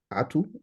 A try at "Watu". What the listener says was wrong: Watu. Watu with the W.